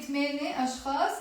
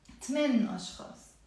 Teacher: I drop the ت مربوطة and I drop the A sound with it.